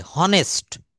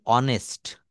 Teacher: এই অনেস্ট কথাটাকে আমরা কেউ কখনো হনেস্ট বলি না, এটা আমরা বরাবরই বলি অনেস্ট